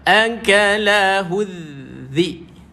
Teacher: Huruf zal lidah keluar, nipis, perlu dikeluarkan lidah kita naik ke gigi atas.